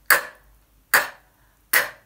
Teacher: You make an explosive, voiceless sound. K, k, k. If you are doing this sound correctly, you should be able to make your tissue move.